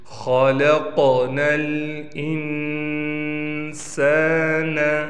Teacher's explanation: قاف کو موٹا بھی کریں گے اور قاف پر قلقلہ بھی کریں گے۔